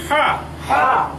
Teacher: হা অক্ষরটি উচ্চারিত হয় কণ্ঠের মাঝখান থেকে।